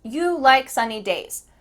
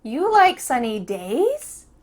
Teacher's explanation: It went up at the end to show that I'm asking a question. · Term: intonation